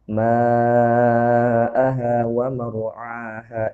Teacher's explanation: Dipanjangkan ya mad wajibnya ya. Ya, lebih dipanjangkan lagi daripada mad jaiz